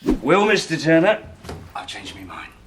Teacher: many accents so I would say I've changed my mind but some accents will actually say I changed me mind especially in British English